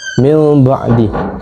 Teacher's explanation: dalam tajwid ia bermaksud nun mati ataupun tanwin ditukar kepada bunyi mim dengan dengung iaitu gunnah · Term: hukum iqlab